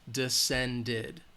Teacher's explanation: the D is the final sound, so it's going to have the id at the end, descended